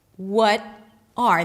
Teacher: The R reduces and connects to the what. But then the T is a flap T, and the R is sort of dropped, and then what you hear is what-a.